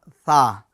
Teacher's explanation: زبان کا سرا اور اوپر کے دانتوں کے اندرونی کنارے سے ثا ادا ہوتا ہے۔